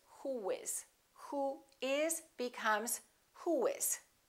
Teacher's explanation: we don't put a little Y in there. We put a little W sound. Wh, wh. Round your lips, who is.